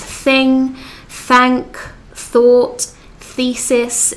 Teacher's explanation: you put the tip of the tongue behind the top of your front teeth, and the friction, so the sound, the rubbing sound between the tip of the tongue and the top of your front teeth will make the sound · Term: soft th sound